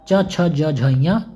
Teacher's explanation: चवर्ग च छ ज झ ञ तालु से उच्चारण होता है